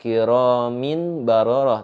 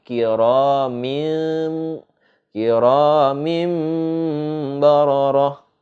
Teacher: Itu ada dimasukkan seperti huruf mim dan juga ada dengungnya, disertai dengung.